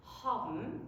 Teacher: Now, there is one very curious sound in Yiddish, and it is the case of the ending BN, which is spelled BN but pronounced BM with nothing in between.